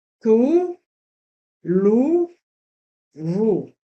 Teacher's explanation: Pour le son OU, la langue recule vers la gorge. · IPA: [u]